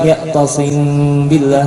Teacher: Jadi ikhfa di sini nanti apa? Dibuka bibirnya sedikit dan didengungkan, dua harokat ya tasim billah, seperti itu. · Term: Ikhfa syafawi